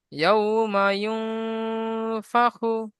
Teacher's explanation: নুন সাকিনকে এক আলিফ পরিমাণ গুণনা করে পড়তে হয়